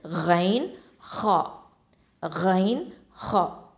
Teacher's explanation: தொண்டையின் ஆரம்ப பாகத்திலிருந்து ஒலிக்கக்கூடிய எழுத்துக்கள் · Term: அதனல் ஹல்க்